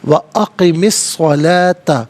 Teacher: صاد حرف شمسیہ ہے، حرف شمسیہ وہ حرف کے جس پر الف لام ہو لیکن لام کو پڑھا نہ جائے، یہاں صاد کا ساؤنڈ ہوگا۔ وَأَقِمِ الصَّلَاةَ، لام کھڑا زبر لا اور لام الف زبر لا دونوں طریقوں سے پڑھنا درست ہے۔